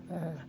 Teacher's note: Kemudian huruf ain, ya, perhatikan a'udzu dipanjangkan 2 harokat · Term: mad tabi'i